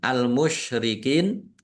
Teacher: karena bertemu dengan huruf terakhir yang dibaca sukun karena wakof, maka menjadi mat arif lis sukun. Dibaca panjang boleh 6, 4 atau 2 harokat.